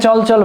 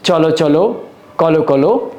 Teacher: দ্বিরুক্ত বিশেষণে ব্যবহৃত অন্তিম অ ও এর মতো উচ্চারিত হবে